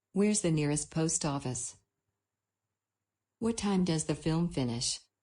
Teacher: a falling intonation is very common in wh-questions